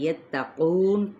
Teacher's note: نون پہ وقف کیا تو وقف بالاسکان ہوگا، یعنی مد عارض وقفی کا قاعدہ